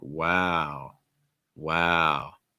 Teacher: lowering the pitch and then lengthening it